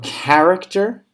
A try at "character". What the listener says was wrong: Yeah, it sounds with a k sound, not a ch sound.